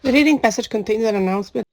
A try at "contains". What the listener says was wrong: Yeah, contains, contain. So make that vowel, carry that longer vowel, contains, contains.